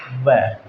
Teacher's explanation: व में देखो, जब आप व का उच्चारण करोगे तो जो होठ है वो गोल आकृति में भी हो जाएंगे और जो निचला होठ है वो ऊपर के दांतों से टकराएगा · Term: दंतोष्ठीय व्यंजन, दंतोष्ठ्य व्यंजन